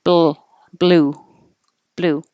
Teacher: If you wait and you make your B and then put the tongue in the L position, there could be an extra sound like baloo, baloo. You could start making a noise before your tongue is in the right position, and then that adds that sound, baloo.